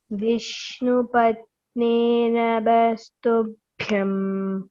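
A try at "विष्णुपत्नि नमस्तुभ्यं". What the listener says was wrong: Patni, there is no elongation. It's short vowel, okay? Vishnupatni Namastubhyam.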